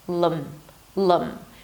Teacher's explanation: an L sound, make it a little darker by engaging the back of your tongue, a schwa sound, and an M.